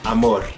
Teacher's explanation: I don't really use a lot of voice in the end, amor, but you can hear it roll just by itself without the voice